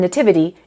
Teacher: But, the pronunciation of the t shifts. We have ch in nature, t in nativity, and sh in nation.